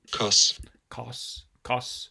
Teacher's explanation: here's our f1 for the speaker's about 670 so that's lowish uh f2 is 1204 so that's backish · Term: low vowel